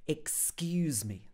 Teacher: we stress the skews part